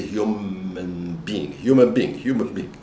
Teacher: give us a bilabial nasal which is M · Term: assimilation